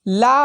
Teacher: तो ऐसे वर्ण जिनका उच्चारण करते समय जीभ ताल को छुए हवा मुख के दोनों बगल के से बाहर आती है तथा जीभ का अगला भाग मसूड़े को छूता है, उन्हें पार्श्विक व्यंजन कहा जाता है